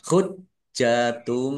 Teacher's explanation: jinnya dibaca dobel ada tasdidnya ditekan biar tampak dobelnya · Hujjatum domah tanwin bertemu dengan huruf ba bacaan iklab dibaca membalik. Tanwinnya dibaca mim dulu ditandai ada mim kecil berdiri.